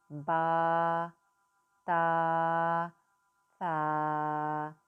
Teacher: سا کی ادائیگی کرتے وقت آپ نے خاص خیال رکھنا ہے کہ سیٹی کی آواز نہ آئے